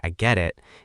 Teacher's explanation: But if you use a flat tone and say, I get it, it might sound like you're annoyed